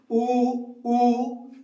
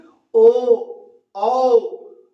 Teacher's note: होठ कैसे हो जाते हैं गोल हो जाते हैं तो गोल हो जाते हैं मतलब वृत नुमा हो जाते हैं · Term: वृत मुखी